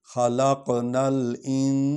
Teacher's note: یہاں الف لام پڑھیں گے کیونکہ شد نہیں ہے، اس پر جزم ہے، نون کو لام کے ساتھ ملا کر پڑھیں گے · فی کو ذرا لمبا کریں گے کیونکہ یہاں پر مد ہے